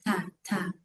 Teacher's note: Ta yang harokat, perhatikan ibu, tidak nafas berlebihan.